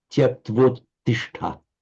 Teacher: Now join them together with sandhi. We have the final a and the following u joining into an o.